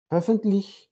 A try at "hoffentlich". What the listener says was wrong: Also ö deyil o. Hoffentlich.